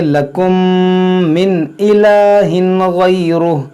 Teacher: यहाँ देखें मीम साकिन के बाद मीम, यहाँ पर इदगाम शफवी होगा